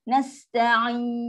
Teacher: Sin ada sifat dia. Sifat rohah. Lepaskan angin dulu.